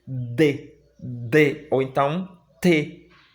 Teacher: o som do T e do D, ele é um som bem palatalizado, ou seja, eu coloco a língua no fundo dos dentes superiores, né? E o meu palato é contraído pela língua.